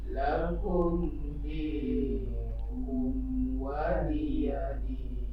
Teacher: Lakum di itu tidak boleh berdengung. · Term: mim izhar syafawi